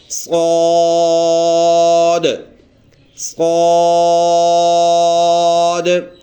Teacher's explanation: اس کو ادا کرتے وقت سیٹی جیسے آواز ہم نکالیں گے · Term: سیٹی والے